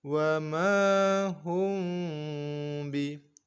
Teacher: kita dengungkan seperti dengung yang biasa lamanya, akan tetapi bibir kita tidak rapat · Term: ikhfa syafawi